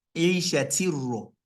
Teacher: Instead of me to say Isha tin ra, I didn't pronounce the ta sound complete, and I moved immediately to ra. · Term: Idgham kamil